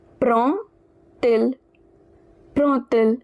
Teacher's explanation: So we want to say he takes or does he take, since it is a question. Prend, it ends with D and il, it begins with a vowel I. So now this D, it will be pronounced like T.